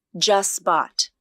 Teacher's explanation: The middle consonant is a voiceless T sound. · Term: elision